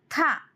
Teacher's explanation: శ్వాసం మహాప్రాణం దంతి స్పర్శం